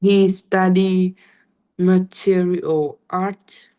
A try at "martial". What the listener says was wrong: martial art. Let's say martial, not material. Martial.